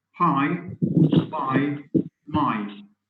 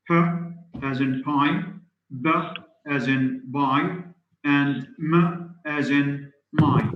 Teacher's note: bilabial, which means made with the 2 lips.